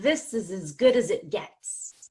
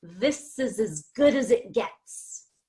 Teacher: I took the S at the end of this and I linked it to the beginning of is so I say siz and then the Z at the end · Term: linking